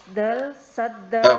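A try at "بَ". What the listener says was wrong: Bukan dal ya, huruf dilihat di sini huruf apa ini?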